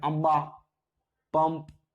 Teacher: आ, ये तो स्वर है, उस पर अनुसार आया है। अनुसार का जो उच्चारण होता है वो न की तरह होता है, न या म की तरह